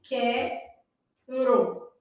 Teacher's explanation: quero u não é pronunciado